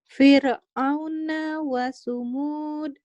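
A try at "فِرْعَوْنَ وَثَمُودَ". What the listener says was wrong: Wasamud. Bukan wasumud.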